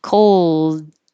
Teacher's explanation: you're putting your tongue in the L position and holding it and then stopping the airflow